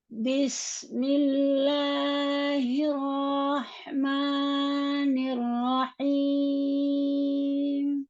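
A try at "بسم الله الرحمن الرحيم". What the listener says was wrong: Tapi hati-hati mad tabi'inya yang harus 2 harokat tidak boleh juga berlebih karena kita pakai lambat ya. Jadi jangan kepanjangan atau ma.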